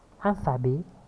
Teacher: Alphabet, ici, le T est muet, mais dans le mot alphabétisation, on la prononce alphabétisation.